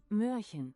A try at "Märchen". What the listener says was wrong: Märchen. There is no Y sound.